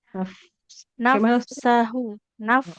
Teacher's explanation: jadi bibir bawahnya nempel ke gigi ujung gigi atas. Nafsahu mirip huruf F.